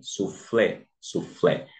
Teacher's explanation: Aqui nos mostra que o acento recai na última sílaba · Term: oxítona